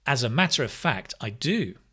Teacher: of is not stressed